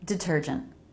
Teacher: First T, a true T because it begins a stressed syllable.